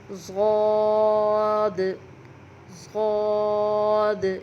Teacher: زبان کے جو سائڈ ہیں وہ جبڑوں کے ساتھ ٹچ ہوتے ہیں تو یہ حرف نکل آتا ہے اور موٹا پڑھا جاتا ہے